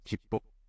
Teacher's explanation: the P sound is pronounced at the end of the first character